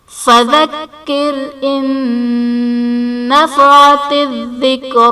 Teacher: ان نفعت میں نون ساکن کے بعد حروف یرملون میں سے نون ہے تو یہاں پر ادغام مع الغنہ کا قاعدہ ہوگا، یعنی نون ساکن میں ہم غنہ کر کے پڑھیں گے